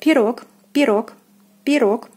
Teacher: O is stressed and is pronounced as in the alphabet